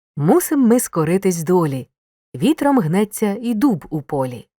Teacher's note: звучанні досягається завдяки рівномірному чергуванню на голо та ненаголошених складів Поглянь наголошені склади чергуються з ненаголошеними що й створює ритм